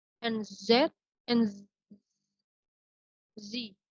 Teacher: The S and Z sounds of the RP system are produced by narrowing the passages of the air at the teeth ridge and forcing the air out from the narrow passage with some friction